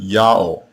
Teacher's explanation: The Assyrians also did not hear the sound W. The letter Wa in this name is not the consonant, it is the vowel marker, and the vowel that was heard was the long O vowel.